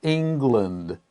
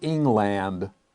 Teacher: if it's one word then we have the sound lind